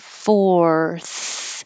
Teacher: and curl your tongue back for the r four and then go from the r curled back to the tongue between the teeth so that's a big movement fourth and you should finish with the f only the airflow